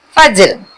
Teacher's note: फ ऊपर के दांत और नीचे के होठ से निकलती है।